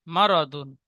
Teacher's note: ইজরা, মিমের উপরে যাওয়ার এসেছে, যাওয়ারটি হারাকাত, হারাকাত তাড়াতাড়ি পড়তে হয়, টান দেওয়া নিষেধ। রর উপরে যাবার এসেছে, তাই রকে পুর করে পড়বো। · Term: র পুর